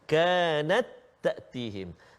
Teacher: Ta yang kedua berbaris. Jadi masukkan bunyi ta itu kena jadi satu-satu ta aje. Jangan baca kanat. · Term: hukum idgham